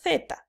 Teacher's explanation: te das cuenta que la lengua se coloca entre los dientes. Por eso se le llama interdentales.